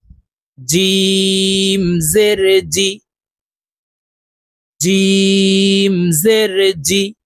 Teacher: জিম হরফ জিব্বার মধ্যখান থেকে উচ্চারণ হবে, কারণ জিমের মাখরাজ জিব্বার মধ্যখান থেকে হবে।